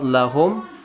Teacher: lafal lakum yang mana mim sukun menah kedepannya huruf M lagi mim sukun bertemu dengan huruf mim maka wajib ditahan dan didengungkan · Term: Idgham Mutamatsilain